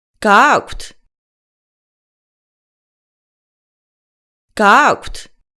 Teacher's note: you can turn a simple statement in Georgian into a question just by changing your inflection